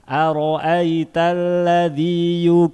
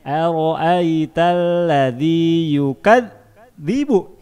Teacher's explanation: Membaca zal yang pakai titik suaranya harus berjalan. Ara'aitalladzi berbunyi.